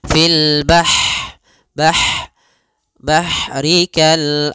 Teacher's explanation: dia punya sifat Hames mengalirnya nafas